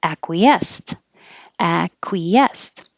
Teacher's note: i don't think i would have put stress on the end